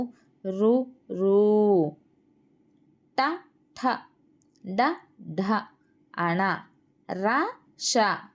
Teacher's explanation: మూర్ధ అంటే అంగిలి అని అర్థం అన్నమాట మూర్ధ స్థానముగా గల అక్షరములకు మూర్ధన్యములు అని పేరు